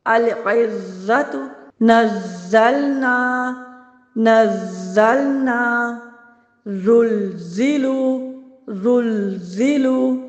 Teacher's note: زا کی ادائیگی دیکھیے، العزت، نزلنا، نزلنا، زلزلو، زلزلو، دیکھیے یہ جو آواز آ رہی ہے یہ زا کی سیٹی ہے